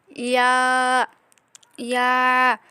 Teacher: ইয়ার মাখরাজ হচ্ছে জিহ্বার মধ্যখান উপরের তালুর সাথে লাগিয়ে ইয়া, ইয়া, দুইটাই কিন্তু একই রকম হবে, ইয়া, ইয়া, এভাবে করে।